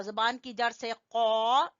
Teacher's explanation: ये था कौ, जबान की जड़ से कौ